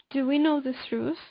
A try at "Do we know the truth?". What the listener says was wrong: No, the first T you're saying truth. You're using like a. Do we know the truth? The truth. I don't know if you realize the first T you're putting an H after that. Truth.